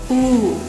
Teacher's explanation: Он очень похож на русский, однако это очень глубокий звук. При его произнесении губы трубочкой делать совсем не обязательно. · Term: Звук U